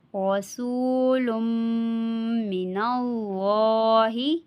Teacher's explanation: یہاں پہ را کو بھی پر پڑھا جائے گا اور اللہ کے لام کو بھی پر پڑھا جائے گا، یعنی کہ موٹا پڑھا جائے گا